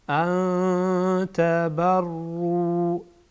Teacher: اینجا بعد از نون ساکن تا آمده، تا از حروف اخفا هست، اخفا میشه